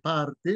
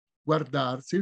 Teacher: di prima parte arte maraviglie si sente la R parte mentre se voi prendete guardar la R è molto più debole